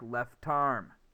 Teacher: then the next starts with the vowel also do this so the last consonant jumps over left arm the t is going to jump over to arm · The T's going to jump over to arm, and it's going to sound like left arm. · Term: linking